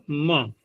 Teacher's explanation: में व्यापित हुआ पहला भाग नासिका से बोला तो म का म में पहला वाला भाग तो नासिका से निकले और बाद में फिर केवल वायु मुख से ही निकलते